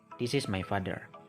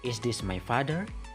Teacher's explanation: Usually we have high pitch at the first syllable in father, but in question statement, usually we have the stress on the second syllable.